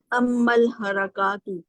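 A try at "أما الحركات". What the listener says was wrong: ہاں یہ حرکات نہیں، یہ کھڑا زبر ہے اس پہ، کیا اس پہ کھڑا زبر ہے کاف پر؟ کاف پر کھڑا زبر ہے.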